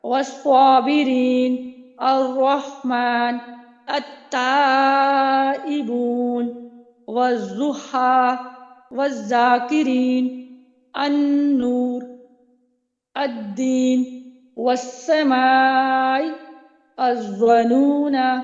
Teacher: جب لام کے بعد حروف شمسیہ آ جائیں تو لام بھی مدغم ہو کر غائب ہو جاتا ہے، یعنی لام بھی پڑھا نہیں جاتا۔ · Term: ادغام شمسی